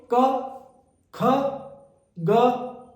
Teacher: कंठ्य और कंठ से थोड़ा ऊपर कोमल तालव्य से इसकी ध्वनि निकलेगी। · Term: कंठ्य और कोमल तालव्य